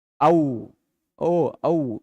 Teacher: ओ कंठ से आ रहा है लेकिन होठ को भी विकृत किया जा रहा है। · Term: कंठोष्ठ